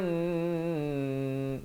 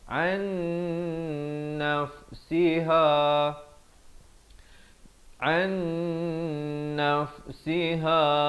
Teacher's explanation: Di sini nun mati bertemu nun, jangan lupa dengungkan 2 harakat.